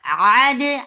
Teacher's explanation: ain from your throat for fatha open jaws attached with dal.